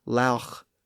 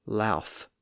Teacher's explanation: Well, when rounding the lips to make the vowel sound, it tends to bring the lower lip closer to the top teeth, and in that environment, it's very close to an F sound. And as people stopped pronouncing the sound after that rounded vowel, some people apparently chose to substitute an F sound in its place, which could be easily produced in that environment.